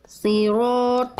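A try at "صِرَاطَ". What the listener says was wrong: Oke, kuatkan dulu huruf sodnya Bunda. Pangkal lidahnya diangkat.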